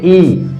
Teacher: ई आप जैसे बोलेंगे ई, तो इसका उच्चारण तालु से हो रहा है। तालु मुख में कहां पर है आप इसका अनुभव कर सकते हैं।